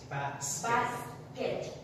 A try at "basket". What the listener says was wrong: So the basket. Emphasis, so the punch should be on the b and not the k. So basket.